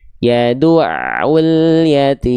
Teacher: Jadi nggak ada pantulan di huruf lam sukunnya ya.